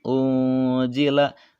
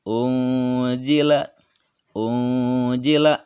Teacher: menjadi suara ketika menyebutkan nun sukunnya itu terdengar n atau terdengar ang, ya. Dibacanya boleh 2 harkat, boleh 3 harkat. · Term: ikhfa